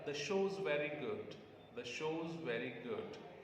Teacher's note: Show and good are stressed.